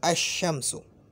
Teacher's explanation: अल का जो लाम है ना उसको शीन से बदलेंगे